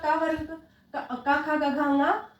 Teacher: इनका उच्चारण स्थान कहाँ है? कंठ है।